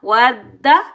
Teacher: دال مشدد کے اوپر تشدید آنے کی وجہ سے دال مشدد کو ہم سختی اور جماؤ کے ساتھ ادا کریں گے، اور مشدد حرف ہمیشہ سختی اور جماؤ کے ساتھ ادا کیا جاتا ہے اور 2 بار ادا کیا جاتا ہے۔